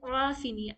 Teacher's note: عین کو ہم بہترین طریقے سے حلق کے بیچ والے حصے سے نکالیں گے